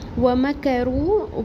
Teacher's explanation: واو میم اور کاف کے اوپر سنگل حرکات ہیں، کسی کو بھی لمبا نہیں کریں گے، کھینچیں گے نہیں، حرکات کو چھوٹا پڑھیں گے۔ رو واو مدہ ایک الف برابر پڑھیں گے۔